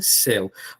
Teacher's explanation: a palavra céu tem ditongo aberto